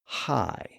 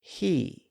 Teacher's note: We shape the vowel sound and we precede it with a little voiceless breath. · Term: H sound